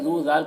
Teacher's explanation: دال کو باریک پڑھنا ہے اور یہاں پر واو مدہ ہے، اسے بھی ایک الف کے برابر کھینچ کر پڑھیں گے